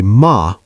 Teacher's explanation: If you say ma with a flat tone, it means mother.